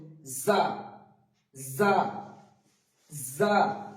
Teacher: দাঁতের কাছ থেকে সিটি বেজে উচ্চারিত হবে যা